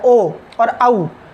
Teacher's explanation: उसी तरह से ओ और औ का उच्चारण स्थान है कंठोष्ठ, कंठ भी है और ओष्ठ भी है। क्योंकि जब हम ओ बोलते हैं तो कंठ से तो ध्वनि निकलती ही है, बाकी हमारा ओष्ठ भी आगे की ओर फैलता है